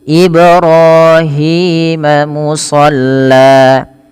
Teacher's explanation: Pantulkan pada lafal bacaan Ibrahim karena ada bacaan qalqalah yaitu ketika huruf-huruf lima yang lima ini ba, jim, dal, tho, dan qof, kelima huruf ini berharakat sukun, maka diperlukan dipantulkan ya, maka harus dipantulkan.